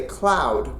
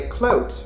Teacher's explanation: Normally, myself and other Canadians would say cloud with an ow sound, but we would say clout with almost an oat sound.